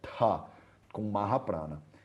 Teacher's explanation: e não é Thagata, é Ta, com Mahaprana. Então, Ta é Alpaprana, Ta, Mahaprana.